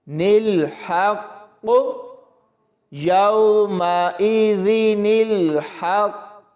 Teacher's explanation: ہا کو قاف کے ساتھ ملاتے ہوئے قاف کے اوپر کلکلا ہوگا، ہا کی آواز حلق سے نکلے گی اور اس قاف کو موٹا پڑھا جائے گا۔